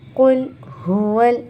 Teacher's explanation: قل یہ استعلا ہے، یہ موٹا پڑھا جائے گا، لیکن یہ لام باریک پڑھا جائے گا